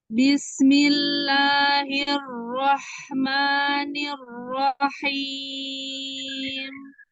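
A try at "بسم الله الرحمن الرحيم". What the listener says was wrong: Ahsanti, Masya Allah.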